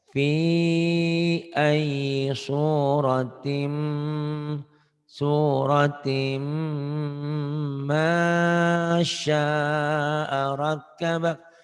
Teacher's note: timnya idgham bigunahnya agak ditahan